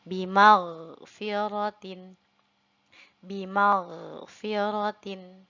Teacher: ada huruf ghain yang berharokat sukun, tidak boleh sampai terdengar memantul